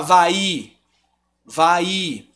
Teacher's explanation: o i ele tá totalmente absorvido pelo som do a